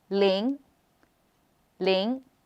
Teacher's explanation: zero is Ling the second tone the up tone